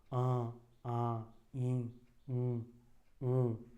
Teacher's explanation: मुख से तो ध्वनि निकल ही रहे हैं, नाक से भी निकाल रहे हो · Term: अनुनासिकता